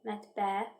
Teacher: Ə-in biri düşür, digəri uzun tələffüz olunur. Vurğu sözün son hecasındadır.